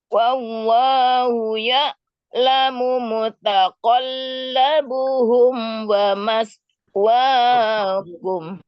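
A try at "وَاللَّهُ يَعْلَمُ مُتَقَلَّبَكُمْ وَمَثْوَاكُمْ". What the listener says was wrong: Apa mutaqallabuhum? Itu bukan buhum, bakum. Mutaqallabakum.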